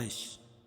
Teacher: یا ساکن سے پہلے زبر ہے ہو تو یا لین، اور وقف کی صورت میں یہ مد لین عارض ہوگا، یعنی مد لین عارض وقفی بولیں گے اس کو۔